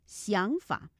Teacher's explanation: 想字第三声，法字第三声